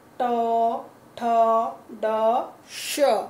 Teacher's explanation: श, षटकोण वाला जो है श, वो ट मूर्धा की तरह बोला जाता है